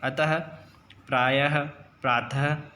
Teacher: इसका उच्चारण आधे ह के जैसा होता है। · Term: विसर्ग